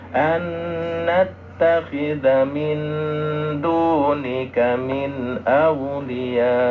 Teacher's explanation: Annat itu kan nun mati ketemu dengan nun kan, idgham bi gunnah.